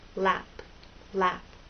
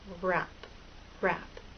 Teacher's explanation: relax a little and have a gentle rounding lap lap but with r your lips are more rounded and a little more tense